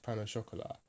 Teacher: But we drop the last T when we say it in English, pain au chocolat, and we also do the sh instead of the ch